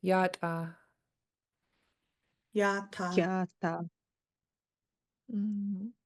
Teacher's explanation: you kind of stop the air in your throat